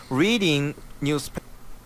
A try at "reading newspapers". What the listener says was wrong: Stress on reading. Okay, you know, reading.